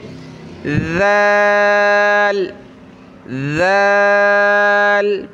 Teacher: ज़बान की नोक थोड़ी सी बाहर निकालेंगे और पढ़ेंगे ज़ाल